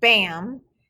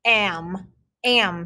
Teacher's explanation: you don't really hear the ah when you say bam you just hear that am am sound that is called a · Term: glued sound